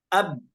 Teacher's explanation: berhentinya di dua bibir maka di sanalah ya keluar huruf ba tersebut dari dua bibir